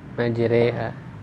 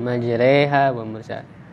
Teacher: imalah itu artinya miring gitu ya, dari fathah ke kasroh. Jadi terdengar E